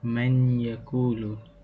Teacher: Ia adalah pertemuan antara huruf nun mati yang bertemu dengan huruf ya. Okay, cara bacaannya adalah dengan menggabungkan bunyi huruf nun mati dengan huruf ya berserta dengung sebanyak 2 harakat. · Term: idgham bi gunnah